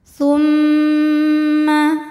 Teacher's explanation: cara membacanya didengungkan bunyi M tahan sampai ada suara masuk hidung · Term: gunah musyaddadah